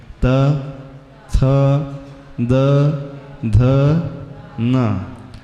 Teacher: हमारी जिवा जो है नीचे वाली दंत पंक्ति को स्पर्श करती है · फिर आता है चौथा वर्ग त त ध ध न, ऋतु लसानाम दंती, इसमें दांत का उच्चारण, दांत को स्पर्श हो रहा है। त थ द ध न, हमारी जिह्वा जो है नीचे वाली दंत पंक्ति को स्पर्श करती है।